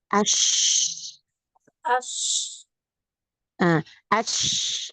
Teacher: Kalau shin, dia agak sedikit nempel di langit atasnya. · Tengah lidah menempel di dinding langit atas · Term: huruf shin